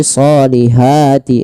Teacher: usahakan hati-hati dalam melafalkan ha kecil. Jangan kita ganti shihati dengan ha besar